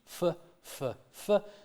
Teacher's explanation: So it is a labiodental sound, and it is a fricative because it's got continuous airflow.